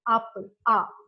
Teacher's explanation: The back a vowel is used.